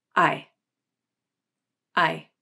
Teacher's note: in an unstressed syllable, the AI vowel is pronounced at a lower pitch with a flatter shape, and it is quicker. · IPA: /aɪ/